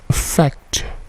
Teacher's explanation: Perhatikan bunyi T-nya itu memantul.